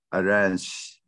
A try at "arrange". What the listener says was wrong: Yeah, anh chị nhớ là đừng có arrange, đừng có đọc ra cái âm y ở phía sau chữ z, đừng đọc âm y. Arrange. Okay, arrange.